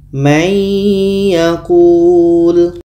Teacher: bunyi Nun hilang masuk kepada bunyi ya untuk mudah paham kita seperti itu bunyi Nun hilang masuk kepada ya dan di sini ada dengung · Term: idgham bunah